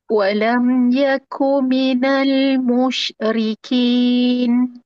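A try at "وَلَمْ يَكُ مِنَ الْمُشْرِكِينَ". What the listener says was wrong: Huruf syin tak perlu potong dia musyrikin.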